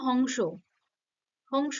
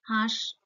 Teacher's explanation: এই নাসিক্য ব্যঞ্জন ধ্বনির যে রেশটা থাকে সেটার ফলে শুরুর যে ধ্বনিটা থাকে সেটা অনুনাসিক হয়ে যায়, অর্থাৎ একটা চন্দ্রবিন্দু যুক্ত হয়ে যাচ্ছে। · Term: নাসিক্যী ভবন